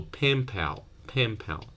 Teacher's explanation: na will borrow the bilabial place of articulation from PA and will become Ma so pen pal pen pal you you touch your lips here